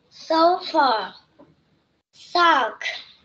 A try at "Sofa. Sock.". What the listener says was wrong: Ok, very good.